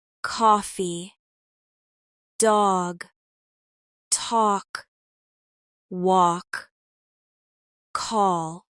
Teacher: Next, stretch your vowels naturally in words like coffee, dog, talk, walk, call. Americans often round their lips slightly for these sounds.